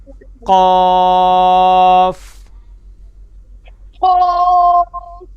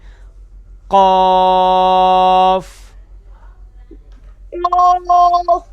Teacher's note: زبان کی جڑ ہے جب کوے کے قریب نرم تالو سے لگے گی تو یہ پہلا جو دو نقطوں والا قاف ہے یہ ادا ہوتا ہے